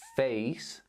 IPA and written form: feɪs (face)